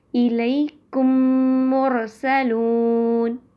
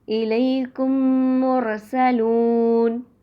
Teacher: الیکم مرسلون، اس طرح کر کے، اور آسان ہے، ادغام شفوی کہیں گے۔ میم ساکن کے بعد جب میم آئے گا تو دونوں میم کو ملا کر غنہ کے ساتھ مشدد ادا کریں گے